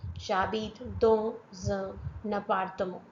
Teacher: N sound is linked with A sound.